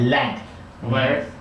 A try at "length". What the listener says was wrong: Okay, I need to show you how to make that TH at the end. So what you do is you take your tongue, thick, try it. Same sound at the end. Length.